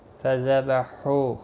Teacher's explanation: ہو واو مدہ ہے، ہا الف مدہ ہے، دونوں کو ایک ایک الف کے برابر کھینچ کر پڑھیں گے